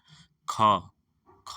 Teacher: ख ख जो बोल रहे हैं कंठ से